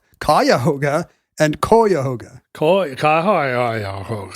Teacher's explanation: you can pretty much use any vowel for the first syllable of Cuyahoga